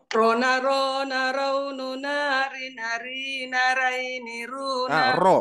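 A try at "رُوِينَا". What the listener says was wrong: Roina, hati-hati, jangan raina, roina. Bukan raini, roini, Bu. Roini, roini, hati-hati. Di sini jangan terbaca ra.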